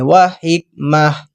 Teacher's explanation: یہاں پر میں نے جب وقف کیا حکمت نہیں پڑھا کیونکہ گول تا ہے، ہم نے یہ پڑھا ہوا قانون کے گول تا پر جب بھی وقف کرنا ہے تو ہم نے ہا کی ساؤنڈ پڑھیں گے، وحکمہ، پھر جب ملانا ہے وحکمتن پڑھیں گے، ثم جاءکم۔